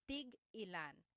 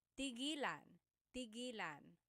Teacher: when there's a hyphen in it, you have to have that glottal stop